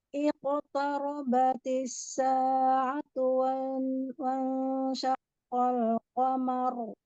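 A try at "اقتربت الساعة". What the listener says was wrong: Nah, yang di sini tebalnya hanya huruf qafnya, qaf sukunnya. Tarobatis sa'atu tidak ada yang tebal lagi. Jangan tarobati, taro, tebal.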